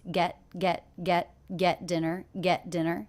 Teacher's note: the tea here is a stop T I don't release it